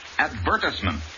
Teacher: the word advertisement accent on the second syllable